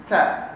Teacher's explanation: di ujung lidah, di belakang dua gigi depan atas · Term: huruf ta